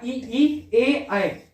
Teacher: इन स्वरों के उच्चारण में जीवा मुंह के आगे की ओर जाती है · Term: अग्र स्वर